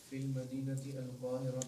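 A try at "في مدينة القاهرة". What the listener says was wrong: فی ہاں فل نہیں ہے بیٹا، ہاں فی مدینہ،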